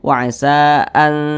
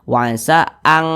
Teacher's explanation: Jadi lebih condong berbunyi huruf n, tapi dia disamarkan. Wa'asa an, jangan dibaca wa'asa ang takrahu, jangan ang, tapi dia lebih condong berbunyi n. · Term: ikhfa hakiki akrob